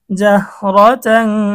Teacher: এখানে ইকফার গুন্না, তানবিনের পরে ইকফার হরফ ফা এসেছে, গুন্না সহ পড়তে হবে।